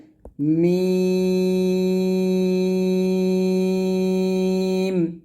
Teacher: উচ্চারণ করবেন মিম মিমটা দুই ঠোঁট মিল করে উচ্চারণ করতে হয় দুই ঠোঁট মিল করে মিমটা পাতলা করে উচ্চারণ করতে হবে